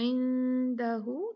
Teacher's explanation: इख्फा light होगा, बारीक होगा, भारी नहीं होगा।